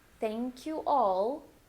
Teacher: A there but you're going to say the a and then for the dark L your tongue can go up behind your teeth